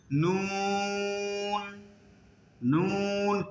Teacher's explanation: মিম মিম মিম, এমনি বলতে পারেন, উচ্চারণ হয়ে যাবে, কিন্তু তার সঠিক উচ্চারণটা হলো শুকনা টুট থেকে মিম, নুন, জিহ্বার আগা দাঁতের গোড়া, এরপর মুখটা একটু রাউন্ড হয়ে যাবে। নুন, নুন, কিন্তু চেহারা কোনো বিকৃত হবে না।